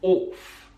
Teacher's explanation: One pronunciation feature that we find in the Queen's English is the use of the or sound instead of oh.